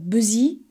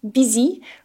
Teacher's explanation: we really need to make sure we have an open E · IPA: /ˈbɪzi/